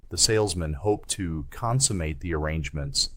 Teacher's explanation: This is stressed on the first syllable con.